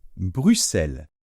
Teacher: on ne prononce pas la lettre X comme d'habitude, mais on la prononce tout simplement se. Donc on va dire Bruxelles.